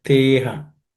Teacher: Okay, the visarga becomes is, and in the te and aham, the a becomes silent